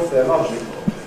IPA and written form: ˌθɪəˈlɒʤkl̩ (theological)